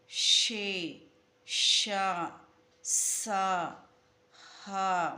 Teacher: షే, ష, స, హ. మనం పలికినప్పుడు గాలి బయటికి వస్తుంది అనమాట. ఊదుతూ పలికే అక్షరాలని ఊష్మాలు అంటారు.